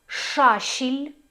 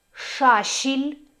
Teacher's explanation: тобто Ш у нас помірно м'яка